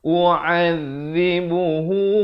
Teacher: Zal di hujung lidah